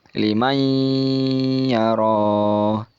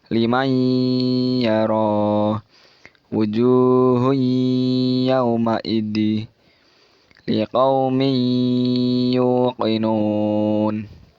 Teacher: agak mendengung di nun sukun bertemu dengan ya itu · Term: idgham bi gunnah